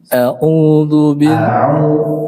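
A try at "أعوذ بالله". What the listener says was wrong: A-nya jelas dulu.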